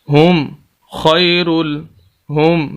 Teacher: یہاں پر غنہ نہیں کریں گے کیونکہ آگے خا حروف ہلکی میں سے